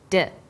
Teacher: when you articulate do you can feel your tongue against your tooth Ridge